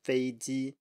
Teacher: make sure you keep two high flat tones